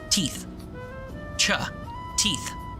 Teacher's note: My tongue goes way back, cha. And then my t sounds are like right behind my teeth